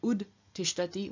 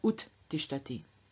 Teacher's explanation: we find the d, devoicing, losing its voice, in front of the unvoiced stop t